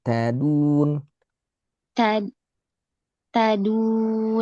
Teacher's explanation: Jangan keras karena dalnya Arab itu lembut. Enggak seperti d-nya kita yang keras.